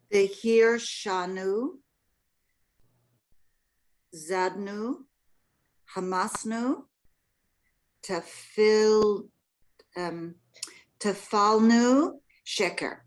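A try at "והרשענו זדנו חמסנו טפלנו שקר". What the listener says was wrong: Good.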